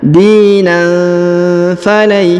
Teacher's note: Dina falan yuqbala min, perhatikan dina, jadi tanwin bertemu huruf fa maka didengungkan dan disamarkan, ya. Jadi alifnya tidak perlu dibaca, ya.